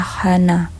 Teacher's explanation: bunyi ini terjadi karena akar lidah bertemu dengan dinding kerongkongan · Akar lidah bersama-sama dengan dinding kerongkongan menghasilkan suatu bunyi radikofaringal, seperti bunyi H. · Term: bunyi radiko al